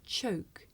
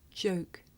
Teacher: the voiceless sound that you hear at the beginning of the word choke and the voiced sound that you hear at the beginning of the word joke. Listen carefully to hear the difference.